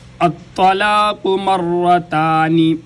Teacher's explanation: باریک تا اس کو ادا کرنے کے لیے اوپر والے دانتوں کے ساتھ زبان کو لگائیں گے تو تا ادا ہوگی، اور طا کو ادا کرنے کے لیے الطلاق، طا بھی موٹا قاف بھی موٹا، الطلاق مرتان، را بھی موٹا اور را مشدد ہے۔ مشدد حروف کا قاعدہ یہ ہے کہ اس کو دو دفعہ پڑھا جاتا ہے، ایک دفعہ پچھلی حرکت کے ساتھ میم والی زبر جو ہے اس کے ساتھ ملا کر، اور ایک دفعہ را کی اپنی حرکت جو زبر ہے اس کے ساتھ۔